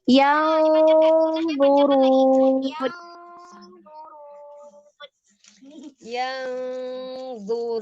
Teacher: Dipanjangkan, gunahnya panjangkan lagi.